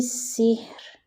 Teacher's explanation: را باریک پڑھی گئی. وجہ کیا ہے کہ اس سے پہلے زیر مل رہا ہے